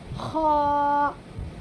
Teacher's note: خا کو تھوڑا سا مطلب موٹا سا کر کے نکالیے، حلق سے ہی نکلے گا لیکن خا، خا ایسے کر کے نکالیے، خا، ٹھیک ہے۔